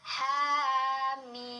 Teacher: H-nya cuma 2, mimnya 6 harokat.